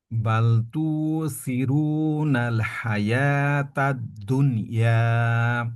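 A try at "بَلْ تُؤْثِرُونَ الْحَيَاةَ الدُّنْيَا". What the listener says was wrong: তবে এই, এই যে এইটা তু, হামজার জজম কিন্তু শক্তভাবে না আটকাইলে হামজার উচ্চারণ বোঝা যায় না। তো এখানে তু সিরুনা না বলে তু সিরুন, আওয়াজটাকে পরিপূর্ণভাবে আটকাই দিতে হবে।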